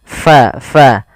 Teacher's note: pada lafal fa alirkan nafas kita karena fa sifatnya sifat hamas